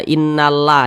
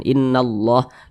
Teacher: tebal kita baca innallah Jangan dibaca innalla jangan tapi ditebalkan innallah lafaz Allah dibaca tebal atau dibaca tafkhim